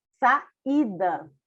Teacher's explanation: o I ele é bem pronunciado, então ele não é uma semivogal